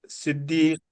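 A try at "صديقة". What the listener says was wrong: सदीका। सदीक, सदीक नहीं है, सदीक जबर है स्वाद पे। सदीका। सदीका। सिद्दीका नहीं, देखिए सिद्दीक में फर्क होता है और सदीक, देखिए सिद्दीक का मतलब होता है सच्चा। लेकिन ये सिद्दीक नहीं है, सदीक है, सदीक।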